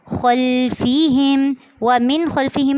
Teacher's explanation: یہاں پر اخفا بھی نہیں کرنا اور غنہ بھی نہیں کرنا کیونکہ یہاں پر اظہار ہو رہا ہے